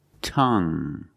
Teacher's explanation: You have only the nasal sound. There's no g.